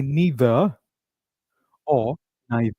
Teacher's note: You can pick the one which you like but make sure that R is silent. We do not pronounce R in the end of it.